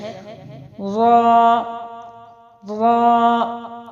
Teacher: را کے لیے زبان کی نوک کی پشت کو اوپر کے سامنے والے 4 دانتوں کے مسوڑوں سے لگا کر، اوپر کے سامنے والے 4 دانت اور ان کے جو مسوڑے ہیں اس کو لگا کر موٹی آواز میں پڑھے جائیں گے۔ یہاں پر ابھی صرف موٹی آواز کے ساتھ سکھایا گیا ہے، لیکن را کے لیے کنڈیشنز ہیں، زبر اور زیر ہونے کے باوجود را باریک بھی پڑھی جاتی ہے، موٹی بھی پڑھی جاتی ہے۔